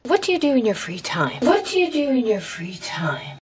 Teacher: So, what do you do in your free time? With the falling intonation at the end.